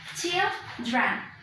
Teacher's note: The first syllable is going to be with a short vowel E, and then the other syllable, which is dren, is going to be with schwa, okay? There's going to be a vowel reduction there. · the stress is on the first syllable